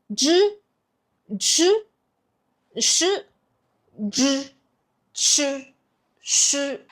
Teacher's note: Well, in Chinese, these three are what we call retroflex sound. What you do is to curl up your tongue first and make sure that your tips is touching the roof of your mouth.